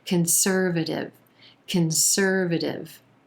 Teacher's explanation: that gives this word its more natural rhythm and flow conservative you'll also notice that that t in the final syllable sounds like a quick d it's a flap t